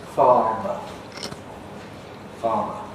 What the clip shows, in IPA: ˈfɑːmə